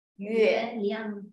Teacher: 亮 is a neutral tone without the tone mark on top